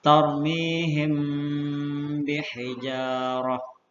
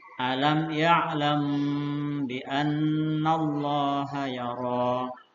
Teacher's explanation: Cara membacanya yaitu dengan suara yang samar antara mim dan ba pada bibir. Kemudian ditahan kira-kira 2 harokat atau 2 ketukan, seraya mengeluarkan suara ikhfa dari pangkal hidung. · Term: ikhfa syafawi